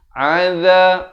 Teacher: ain di pertengahan kerongkong, zal di hujung lidah